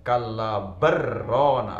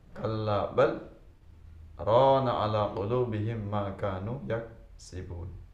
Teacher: Kalla, maka yang benar dibaca kalla bal, tanda sakta, berarti sejenak tanpa nafas